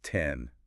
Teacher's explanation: a little puff of air, like a little explosion. That's called aspiration. That puff is a physical thing.